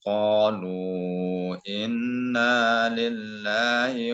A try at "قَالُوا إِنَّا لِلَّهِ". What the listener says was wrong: Diulang dari qalu, maksimalkan nunnya yang bertasydid ini gunnah ya. Dengungnya kurang dapat.